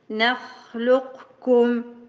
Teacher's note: دايما تاخذيه على التجويف الحلقي نعم نعم نعم نخلقكم ايوه بس خ محتاجه همس رخاوه قبل الاستعلاء · الخاء محتاجه همس ورخاوه قبل الاستعلاء